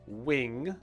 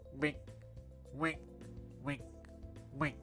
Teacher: It's because the air needs to go through your nose in order to make that sound correctly